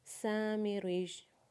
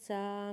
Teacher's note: سین کو الف مدہ کے ساتھ پڑھتے ہوئے سین کو ایک الف کے برابر کھینچیں گے، میم کے نیچے زیر پڑھیں گے، را کو یا مشدد کے ساتھ ملاتے ہوئے را کے نیچے زیر پڑھیں گے، اور یا مشدد کے اوپر پیش پڑھیں گے، اور وقف کے بعد یا مشدد کو ساکن پڑھیں گے.